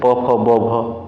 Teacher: ओष्ठ से प, फ, ब, भ, म होगा